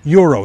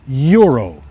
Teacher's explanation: Euro it has an invisible Y in front of it